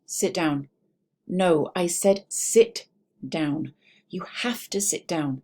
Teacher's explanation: Did you notice that there was a lot of flat, falling intonation? There was no rise then fall.